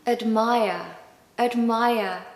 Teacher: We haven't got a strong vowel sound in that first syllable because the second syllable is stressed. And the rule goes that the schwa sound falls on the syllable that is unstressed.